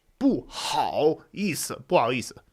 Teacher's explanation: You just sort of drop the H.